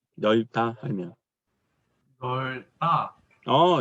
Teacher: 리을 비읍 같은 경우는 리을로 발음하는 게 원칙이야